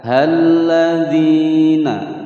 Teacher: Pada huruf H langsung masuk ke huruf lam yang bertasydid. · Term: al-syamsiyah